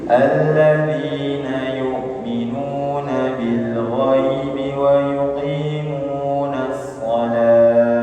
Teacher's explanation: Wa yuqimunas shalah, waqaf di sini boleh kalau tidak cukup nafasnya, ya, boleh kalau tidak cukup nafasnya, maka tak marbutah ketika dia sukun, maka ketika dia di waqaf di tak marbutah maka berubah menjadi bunyi ha sukun